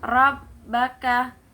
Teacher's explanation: ro-nya itu tafkhim, yaitu tebal. Huruf ro-nya tafkhim.